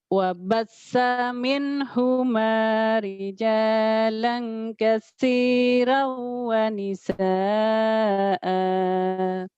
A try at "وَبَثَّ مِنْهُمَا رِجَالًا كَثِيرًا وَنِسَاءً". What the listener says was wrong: Udah lumayan, cuman ibaratnya lidahnya belum lembut ya. Masih keras,